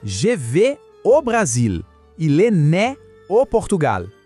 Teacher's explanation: O ao tem um som de o bem aberto. É bem diferente do en que a gente acabou de ver.